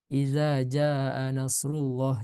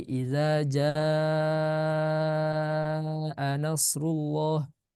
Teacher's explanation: dibaca panjang lebih dari dua harakat ya karena ini termasuk kepada Mad far'i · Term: Mad muttasil, mad wajib